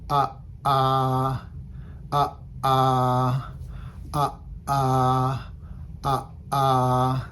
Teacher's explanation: you kind of chop off the the sound and then open it back up again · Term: glottal stop